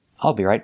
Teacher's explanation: we don't say io we say al it's an open sound and it's a short sound